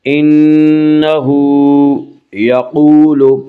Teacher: قاف کو پر پڑھیں گے، قاف حروف مستعلیہ میں سے ہے۔